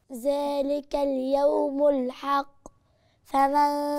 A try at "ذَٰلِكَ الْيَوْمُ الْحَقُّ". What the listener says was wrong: فين القلقلة؟ ما عشان ما قلقلتيش القاف، أنا مش سامعة قاف. ذلك اليوم الحق. الحق.